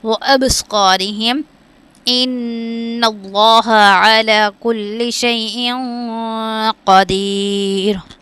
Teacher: اب با پہ قلقلہ کرنا ہے اور صاد پر زبر ہے، اس کو ویسے بھی موٹا پڑھیں گے لیکن الف سے پہلے زبر آ جائے گا تو اس کو ہم 1 الف یعنی 2 حرکات کے برابر کھینچیں گے.